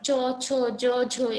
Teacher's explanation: তারপর ঘিষ্ট ধ্বনি হলো যে তোমার চ, ছ, জ, ঝ, এগুলো যখন উচ্চারণ করবে তখন তোমার জিহ্বা বা তালু স্পর্শের পরপর উভয়ের মধ্যে কি বাতাসের একটা ঘর্ষণ লাগবে, সেজন্য এটা হচ্ছে ঘৃষ্ট ধ্বনি।